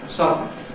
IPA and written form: ˈsʌdn̩ (sudden)